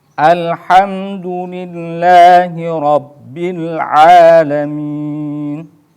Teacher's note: dan dibaca boleh 2 harokat ketika dibaca cepat atau dibaca hadir boleh dibaca pertengahan 4 harokat dan yang terakhir dibaca 6 harokat atau disebut dengan Mad Arid lissukun